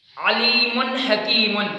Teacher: نون تنوین کو صاف کر کے پڑھیں گے، واضح کر کے پڑھیں گے، ظاہر کر کے پڑھیں گے